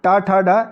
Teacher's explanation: इनका उच्चारण मूर्धन्य से किया जाता है